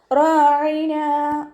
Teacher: റ ഫത്ഹയാണ് ഉയർത്തിയിട്ട് ഉച്ചരിക്കുക റ എന്നായി പോകരുത് റാ അനിന്റെ മഹറജ് വസത്തുൽ ഹൽക് തൊണ്ടയുടെ മധ്യഭാഗം സൗണ്ടിനെ